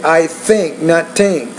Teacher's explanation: when you say think you have to get your tongue between teeth that's called an inter Dental consonant